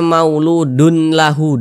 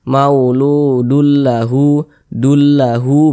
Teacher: jadi bunyi tanwin ini dimasukkan ke huruf lam